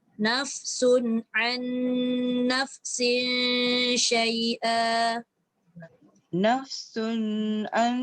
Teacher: Sun tak boleh lama. Sun tu izhar.